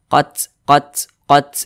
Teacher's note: Di sini yang pertama, di sini ada huruf ta. Huruf ta ini dia sukun. Ketika melafazkannya ada udara yang mengalir. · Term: sifat hamas